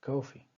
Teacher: we can actually identify that the stress falls on the first syllable